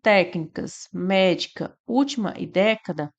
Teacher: técnicas médica, última e década, nós temos como sílaba tônica a antipenúltima, né? Então aqui nós temos palavras proparoxítonas, tá?